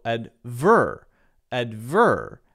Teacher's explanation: the first syllable is stressed advertisement and it's a ties sound you might hear in British English more often a stress on the second syllable so adver adver and then instead of a tiesment maybe advertisement